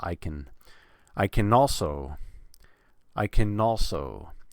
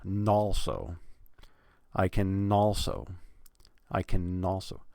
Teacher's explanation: that n at the end of can just pretend it's the beginning of also I can also so that would be nalso I can also